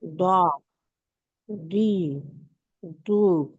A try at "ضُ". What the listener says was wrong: अब आपने जो पढ़ा ना, ये दौद नहीं पढ़ा आपने, दाल पढ़ा एक तो। सेकंड वाले पे आपने क्या किया कि दाल ही पढ़ा कलकला के साथ।